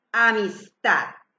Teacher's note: Hago la fuerza en tad. Es una palabra sin tilde y es aguda.